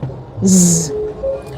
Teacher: It is fricative because there's glide of air from a narrow opening in your mouth, the oral speech organ, when pronouncing this sound. And it's an alveolar speech sound because the place of articulation is the alveolar ridge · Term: voiced fricative alveolar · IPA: /z/